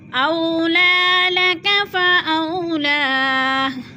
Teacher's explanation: اولا لک فاولا، فاو پہ پھر وولین ہے، وہ ساکن سے پہلے حمزہ کے اوپر زبر ہے تو وولین، وولین کو لمبا بھی نہیں کرنا اور جھٹکا بھی نہیں دینا